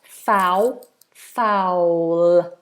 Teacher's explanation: I want you to imagine a little W in there